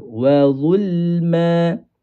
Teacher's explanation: Zulma lam kena tarik sikit. Jangan kita gulungkan lidah.